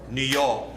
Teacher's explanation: Slash the R, and O-R becomes A-W.